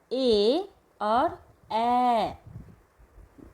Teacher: तो यहाँ पर 2 वर्ण आते हैं, 2 स्वर आते हैं, ए और ए। इन दोनों का उच्चारण कंठ और तालु दोनों से होता है, इसलिए कंठ तालव्य ये स्वर हैं।